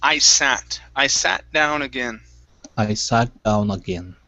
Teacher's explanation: instead of saying sit, okay, with an E sound, okay, you give me an ah